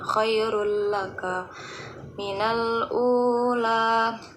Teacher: Nah, di sini yaitu tanwin bertemu dengan lam, maka dibaca dengan tidak berdengung. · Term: idgham bila ghunnah